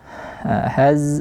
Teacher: alirkan dulu bunyi Zai ada shofirnya juga mengalir bunyi Z